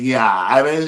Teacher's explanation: what we call vocal fry that sound some people speak with that sound